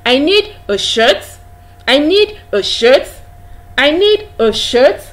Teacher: you can actually hear and feel the pitch of your voice Rising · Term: rising tone